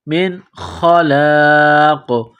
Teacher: نون ساکن کے بعد خا ہے، حروف حلقی ہے تو نون ساکن پر غنہ نہیں کریں گے. من خلاق، یہاں پر جب سٹاپ کریں گے، وقف کریں گے تو قاف کو سائلنٹ کریں گے، قاف جب ساکن ہو جائے گی تو یہاں پر قلقلہ کریں گے.